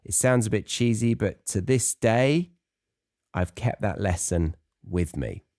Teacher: Do you hear that stress on to this day? So it kind of goes up, but there's a pause after the day, and it's stressing this part of the sentence.